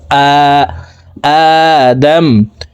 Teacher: আলিফের উপরে খারা জবর আছে, তাই উপরের দিকে ধাবিত করে এক আলিফ টেনে পড়তে হবে।